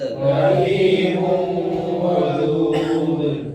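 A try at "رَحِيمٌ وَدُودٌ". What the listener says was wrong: دال میں قلقلہ تھوڑا سا پکڑ کے پڑھیں. رحیم ودود،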